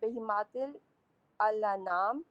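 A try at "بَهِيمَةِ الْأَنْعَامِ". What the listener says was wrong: اس کو الانعام نہیں پڑھتے، بہمت یہ کوئی حرکت والا الف نہیں ہے، یہ خاموش ہے. بہمت الانعام، بہماتی الانعام نہیں، بہمت الانعام. یہ الف نہیں پڑھا جائے.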